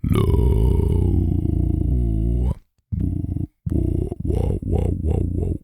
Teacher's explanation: you can hear the individual like clicks in my vocal cords